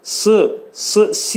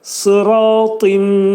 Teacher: Alə sıratında sat hərfindən sonra gələn i'laşır. Sat hərfinin məxrəci dil kökündən yuxarı qaldırılaraq dolu sat hərfini deyirik. Si yox, sıratın.